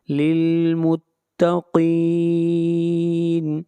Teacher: قاف کو موٹا پڑھیں گے، قاف حروف مستعلیہ میں سے ہے اور للمتقین کے اوپر مد عارض وقفی ہوگی، اس مد کی مقدار 3 الف ہے۔